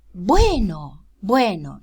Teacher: In absolute initial position, it's realized as an occlusive.